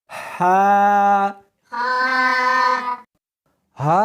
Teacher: اس کو حلق میں سے نکالنا ہے اور ساتھ میں ہوا بھی ہونی چاہیے. ہا نہیں پڑھنی بلکہ اس کو حلق میں سے نکالنا ہے، سینے میں سے نہیں نکالنا.